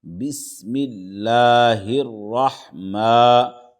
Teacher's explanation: ہا را زیر ہر، بسم اللہ، راح زبر راح، بسم اللہ الرح، میم کھڑا زبر ما، بسم اللہ الرحمٰ، کھڑا زبر ہے، دو حرکت کے برابر کھینچیں گے اس کو۔